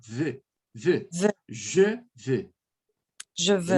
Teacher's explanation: aqui você vai falar como se fosse a letra V, V do português, só que com leve biquinho. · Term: som de V